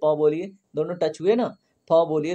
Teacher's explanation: जब आप प फ ब भ बोलते हैं तो क्या होता है, आपके दोनों होंठ आपस में टच होते हैं। देखिए प बोलिए, दोनों टच हुए ना, फ बोलिए, दोनों टच हुए। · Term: ओष्ठ्य